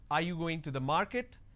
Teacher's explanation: This is going up because the last word denotes like it's a question. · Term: rising tone